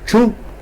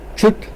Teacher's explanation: Chu with high tone, sit, chut with low tone, sit